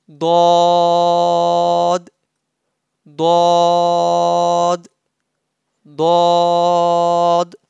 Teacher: Pronounced from the sides of the tongue and roots of top back teeth.